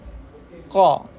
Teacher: pangkal lidah paling belakang menempel pada langit-langit bagian yang lunak ya itu bagian dagingnya daging bagian lunak yang lunak daging paling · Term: huruf q